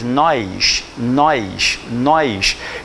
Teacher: nós criamos um izinho na pronúncia · Ela veio ao Rio para assistir às minhas aulas e ela acha muito estranho, e de fato é estranho, como nós cariocas temos a mania de criar uma espécie de uma semivogal epentética quando pronunciamos.